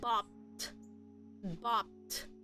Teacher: notice the ed is pronounced as a T sound